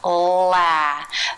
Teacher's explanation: a light L consonant sound tip of the tongue is lifted up and making contact behind the upper teeth